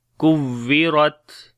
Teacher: ra we read in heavy sound due to fatha sign on it, and on the ta when we stop, so we make shiddat and hums quality.